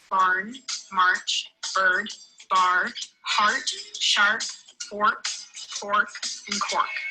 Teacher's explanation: One of the main characteristics of the accent is the R sound. This is often heavily pronounced, much more so than British English.